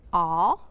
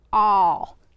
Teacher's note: with the aw sound, the lips are pursed closer together, and they tend to jut out just a little bit from the face. So when we say aw, our jaw is jutting out just a little bit from the face when you say that.